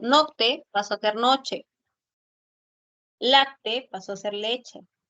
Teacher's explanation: Entonces, esos dos sonidos se convirtieron en uno solo. El sonido oclusivo velar sordo con el oclusivo dental sordo pasaron a ser un africado. Africado palatal sordo.